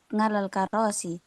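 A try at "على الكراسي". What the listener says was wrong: alal karasi. Bukan ngal.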